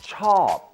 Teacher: The Thai word for like is ช อ บ a falling tone.